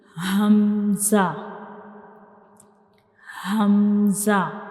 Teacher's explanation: Hamza is pronounced from the bottom part of the throat.